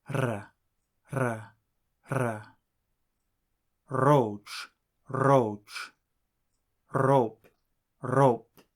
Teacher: the letter R is slightly rolled just as it is in Italian